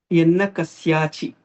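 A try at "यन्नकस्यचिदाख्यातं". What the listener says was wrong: It is not Yanna Kasya. There is no Dirgam there. Kasya Chidakhyata.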